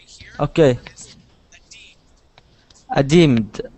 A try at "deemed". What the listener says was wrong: Good. One more time.